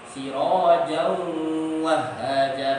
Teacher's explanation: idgham bi gunnah tapi ghairu tam, karena wawu sama ya itu keluar dari dua makhraj, dari hidung juga dari mulut juga